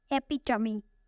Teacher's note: It has 4 syllables and the stress is on the second syllable. Epitome. This word is commonly mispronounced because the third syllable has the schwa.